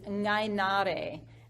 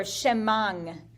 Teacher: The ayin becomes a ng sound.